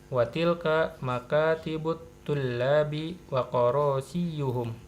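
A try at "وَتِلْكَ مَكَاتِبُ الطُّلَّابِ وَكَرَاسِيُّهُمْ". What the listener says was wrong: Karo bukan koro ya. Iya.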